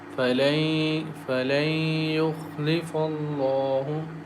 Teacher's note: Nun sakin is followed by ya, and ya letter is one of the merging letters. So we merge nun sakin into ya and recite with nasal sound